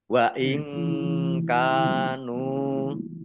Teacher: nun sukun bertemu dengan huruf kaf bacaan ikhfa dibaca samar-samar kaf fathah alif mat tobi'i nun domah wawu sukun juga mat